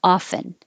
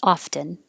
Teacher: You can say it without the T, and that is most common, often. But it is possible some people say it with a T, often.